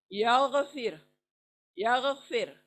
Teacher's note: Gargle की जगह से गाइन आएगा। या गफिर, ग नहीं, हिंदी का ग नहीं, ग की जगह से नहीं आएगा, गार्गल की जगह से।